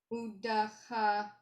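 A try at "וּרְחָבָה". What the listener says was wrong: that's a resh, not a dalit. They look very similar. Or chava.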